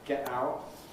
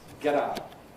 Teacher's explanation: One is the tendency towards glottal stops, [ˈgeʔ ˈaʊʔ]; the other is the tendency towards T-voicing between vowels